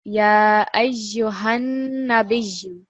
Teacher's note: So the emphasis, the stress is on the noon. We're not going to make it any longer.